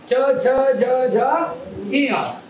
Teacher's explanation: म्हणतात मग तालव्यवर्णामध्ये च छ ज झ जर आपण म्हटलं तर आपल्या जिभेचा टोक वरच्या दाताच्या वरच्या बाजूला म्हणजेच कुठे कठोर तालूला जाऊन भिडते